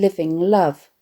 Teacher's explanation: the onomatopoeic murmuring the glinting and gleaming vibrancy of sparkling and the alliteration of the liquid L sounds in living love create a pleasantly flowing rhythm